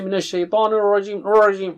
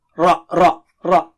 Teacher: Minas Shaitanir Rajim. Ra is thick here. It is not English R. Be careful.